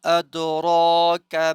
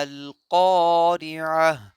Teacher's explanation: کاف باریک ہے، وما ادراک ما القارعہ، اور قارعہ کی قاف موٹی ہے